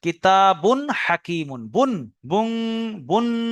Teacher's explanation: তানবিন বা নুন সাকিনের আওয়াজকে বিনা গুন্নায় জাহির করে পড়তে হবে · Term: ইজহার